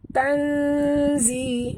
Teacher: Tanzi, nun mati bertemu zai, ikhfa hakiki, kita sorokkan bunyi nun ke dalam zai disertai dengung 2 harakat